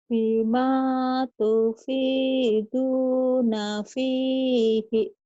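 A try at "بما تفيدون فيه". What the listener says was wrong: Bima tufiduna fihi, bukan bihi ya, fihi.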